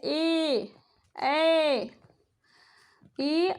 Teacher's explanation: उसके बाद है ए और ए का उच्चारण करते समय कंठ और तालु दोनों का यूज होता है। हमारे जिह्वा जो है थोड़ा सा टेढ़ा होकर के तालु से टच होता है और कंठ से आवाज़ निकलती है, तो इसलिए इसका उच्चारण स्थान कंठ और तालु है।